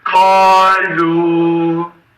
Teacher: qaf hərfi öz məxrəcindən səslənərək qalınlığını saxlayır. Ləm hərfi öz incəliyini saxlayır və təbii məd baş verir.